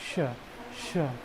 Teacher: एक आवाज भी बाहर आती है सीटी जैसी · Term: तालव्य श